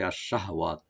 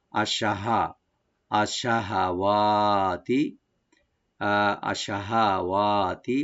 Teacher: হার উপরে যে জবরটা আছে একটু রাইট দিয়ে পড়তে হবে, যেন সাকিন যেন না হয় , সাকিনের মতো যেন না হয়, অনেক সময় দেখো আমরা পড়তে